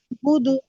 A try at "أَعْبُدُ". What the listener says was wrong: বুদু হবে না গো, কারণ যখন ওয়াকফ করব তখন এটা সাকিন হবে, আর সাকিন হলে এটা কলকলা হবে, আর দালের কলকলা হবে জেরের মতো, পেশের মতো না। আ আ বুদে, আ বুদে। মা আ বুদে। আ বুদে, আ বুদে।